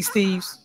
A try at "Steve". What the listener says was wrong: My last name is Steve. Not Steve's. It's Steve. That's how you properly pronounce my name. Steve.